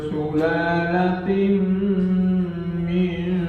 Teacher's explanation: Kemudian ada idghamunna pada ayat min sulalatin sulalatin ini tanwin ketemu dengan mim masuk di mim